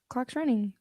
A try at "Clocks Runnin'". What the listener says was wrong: Okay, there's no G. Drop your G.